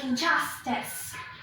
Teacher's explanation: Here the stress is on the second syllable.